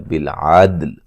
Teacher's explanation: وقف کریں گے لام کو بھی ساکن کریں گے، ٹھیک ہے، دال پہ قلقلہ ہے، دال کو ہلا کے پڑھیں گے